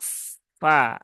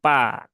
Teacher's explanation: huruf Fa dia di huruf bibir ya huruf syafatan yaitu ee ujung dua gigi Sari atas bertemu dengan bibir bawah